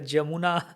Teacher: Others will say Yamuna Tira, but Bengalis will say Jamuna.